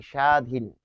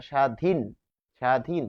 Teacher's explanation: ফলে কি হচ্ছে, যে ত্বক, তারপর শ্বশুর এবং স্বাধীন, এখানে আমরা দেখতে পাচ্ছি যে শব্দের শুরুতে কিন্তু বফলা রয়েছে, এবং শব্দের শুরুতে বফলা থাকলে সেটি উচ্চারিত হবে না